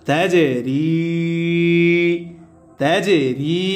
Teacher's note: কলকলা হরফ প্রতিধ্বনি আওয়াজ দিয়ে পড়তে হবে, ধাক্কা দিয়ে পড়তে হবে।